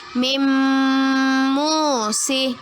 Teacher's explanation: Mu'allimah baca dengan memasukkan bacaan tanwin ke dalam huruf mim. Kemudian mu'allimah dengungkan dan mu'allimah tahan 2 harokat. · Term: idgham bi gunnah